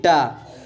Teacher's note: ट मूर्धन्य भी है, अल्पप्राण भी है और अघोष भी है